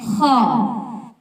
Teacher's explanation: خ، خ حلق کے اوپر والے حصے سے ادا ہوتا ہے